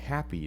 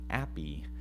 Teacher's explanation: Think about a word that has an H. You're going to want to do an aspirate onset for that, otherwise people won't understand that you're saying happy. They might think you're saying appy.